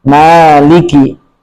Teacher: Hati-hati di mim ini tidak ada huruf tebal kecuali ro ya ma tapi rahma senyum aja arrahma ma dan ma tapi ma ya arrahmanirrahim sama-sama arrahmanirrahim [bernyanyi] ayat keempat kita memanjangkan mim ya. Jadi sekali lagi di riwayat bacaan kita memanjangkan mim